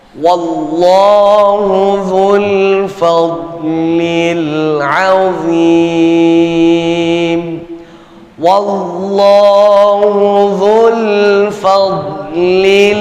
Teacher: quataah tutup ayat wallahu Dul fadlilim wallahu Dul fadlilim D sukun bukan huruf Qalqalah sehingga Enggak ada alasan kita buat memantulkan bacaan dad yang sukun yang mati